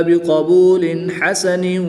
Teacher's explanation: 2 زیر کی تنوین کے بعد ہا حروف حلقی میں سے ہے، یہاں پر اظہار ہوگا، تنوین کو خوب ظاہر کر کے پڑھیں گے